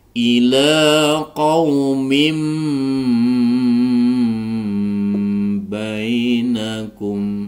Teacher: maka membalik nunnya menjadi bacaan mim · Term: iqlab